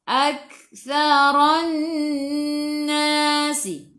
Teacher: Sasi tu hujung lidah keluar pada gigi depan.